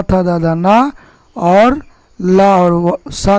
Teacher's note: था दादा ना, और ला और सा का उच्चारण स्थान क्या है? दंत है।